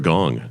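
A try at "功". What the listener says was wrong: No, gong actually means it's actually pronounced gung or even kung, as in kung fu.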